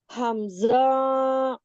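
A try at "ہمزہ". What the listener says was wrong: खींचना नहीं है, इसको नॉर्मल पढ़ना है। हमजा नहीं, हमजा। हमजा।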